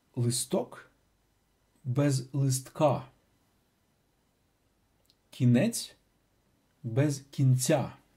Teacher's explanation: The stress stays on the same syllable even if the specific vowel stressed in nominative singular vanishes in genitive singular